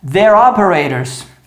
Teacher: T com som de R porque está entre vogais